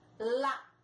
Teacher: palavra que tem a antepenúltima sílaba mais forte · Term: proparoxítona